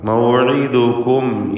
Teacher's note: ഇവിടെ മീമിനെ അല്പം പോലും മണിക്കാതെ ഇൽഹാർ ചെയ്യുക.